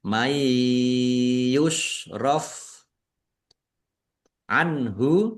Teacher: nun sukun bertemu dengan huruf ya, bacaan idgham bihunnah masuk dengan mendengung, yaitu mendengung ya ditandai yaknya ada tasdidnya, ditahan biar tampak mendengung.